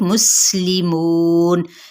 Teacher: سین پہ سیٹی کو واضح کریں گے آپ